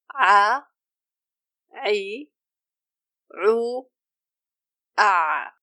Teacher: ayn is pronounced by approaching the epiglottis to the back of the throat considerably. If you want to locate your epiglottis, try swallowing your saliva.